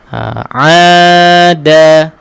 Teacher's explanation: Huruf a tekankan sikit kita punya dekat halqum ni, dekat tekak kita. Ada. Da nipiskan belakang gigi, kacip atas.